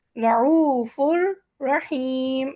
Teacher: ہم نے نون کو نہیں پڑھا جو تنوین کا نون ہے